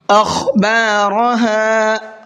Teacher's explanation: خا کو پر کر کے پڑھیں گے اور را کو بھی پر کر کے پڑھیں گے